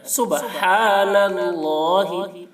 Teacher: ہا کو حلق سے ادا کرنا ہے اور اللہ کا لام کو پور کرنا ہے